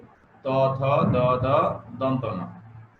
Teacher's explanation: ত উচ্চারণ করতে ত দাঁতের সাহায্য নিতে হয়, এই জন্য এগুলি দন্ত বর্ণ।